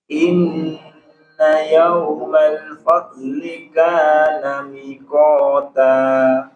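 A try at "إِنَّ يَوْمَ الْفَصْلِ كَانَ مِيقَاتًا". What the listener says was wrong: Kana miqata. Miqata, dua. Ada sedikit koreksi pada apa namanya, huruf shad ya, huruf shad. Jadi huruf shad itu usahakan dia ada sofirnya Pak, suara sofir. Fasli. Inna yawmal fasli kana miqata.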